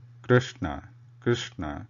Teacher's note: we are trying to pronounce the swara r, not the Vyanjanam ru.